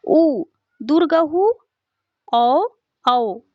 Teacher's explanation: उच्चारण में होठों की आकृति वृत्त के समान बनती है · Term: वृताकार